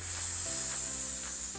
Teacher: That's the way you trick your mouth into making the S sound. A nice crisp clear T followed by a little stream of air. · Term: lazy T